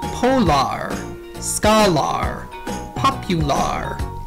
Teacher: a r and o r may say their lazy IR sound in an unstressed syllable